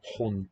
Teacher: Dutch likes these mid-vowels. Instead of hund and hound, which come from a high vowel.